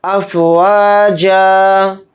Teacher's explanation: افواجا تو دیکھیں یہاں پر آیت ہو رہی ہے حالت وقف میں 2 زبر یہاں پر نہیں پڑھے جائیں گے. ایک زبر پڑھا جائے گا جیم الف کے ساتھ لگا کر ایک زبر پڑھا جائے گا.